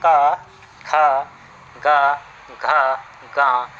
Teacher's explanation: जो आपका क वर्ग है इसका जो उच्चारण स्थान है वो कंठ है